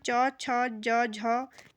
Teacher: जब हम च, छ, ज, झ का उच्चारण करते हैं तो हमारी जो जीभ है वो किससे टच होती है, स्पर्श करती है? हमारे तालु से। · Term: तालव्य व्यंजन